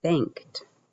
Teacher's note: we hear a t at the end of the word instead of a d